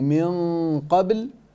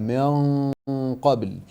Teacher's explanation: You made it empty mouth where here it should have been a full mouth ghunna